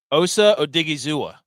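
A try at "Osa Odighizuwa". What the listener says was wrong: Osa Odigizua. You have to inflect on the A at the end.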